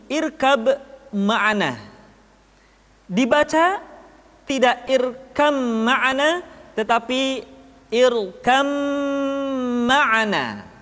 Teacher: disertai dengan ghunnah ditahan tidak boleh tergesa-gesa